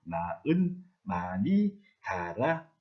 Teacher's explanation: 달하라고 말하지 않습니다. 이때 발음을 할 때 히읗을 없애고 탈락시켜서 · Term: 히읗 탈락